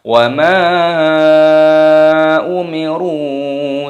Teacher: Mimnya dibaca panjang, ada tanda alifnya. Ini dibaca mad sa'im munfasil, dibaca 5 ketukan.